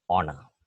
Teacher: the initial H is not sounded it's silent